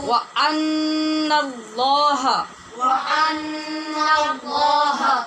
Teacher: ان کہتے ہوئے ہونٹ بند نہیں کرنے، غنہ ادا کرنا ہے، ہونٹ بند نہیں کرنے